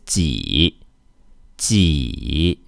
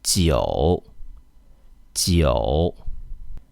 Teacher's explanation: We have to push the front part of our tongue toward the hard palate. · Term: ji sound